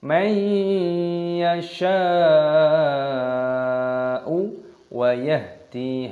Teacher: ada mad wajib mutasil, panjangkan 6 ketukan